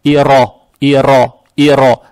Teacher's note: Далее стоит буква ро с фатхой. Фатха приобретает оттенок о. Ро читается твердо.